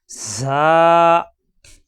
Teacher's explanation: জিব্বা নিচে দাঁতে চাপ দিয়ে সফিরে হরফ বাতাস বের হবে।